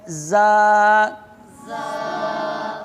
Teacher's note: صفیریہ میں سے ہے، یہ زبان کی نوک اور دونوں دانتوں کے اندرونی کنارے سے ادا ہوتی ہے